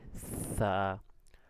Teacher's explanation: নরম হবে, জিহ্বার আগা এবং সামনের দুই দাঁতের আগা লাগবে, সা, বাতাস বের হবে কিন্তু শব্দ হবে না, ঠিক আছে?